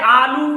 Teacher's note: उसने लू पे जोर दे दिया, मतलब किसी को लंबा खींचने के लिए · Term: प्लुत स्वर